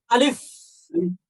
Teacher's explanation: যখন আপনি আলিফ বলবেন তখন এই ঠোটের মাঝখান থেকে একটা বাতাস বের হয়ে যাবে